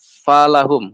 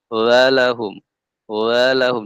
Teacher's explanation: Falahum huruf fa. Kita kurang keluarkan udaranya, berubah menjadi apa? Walahum.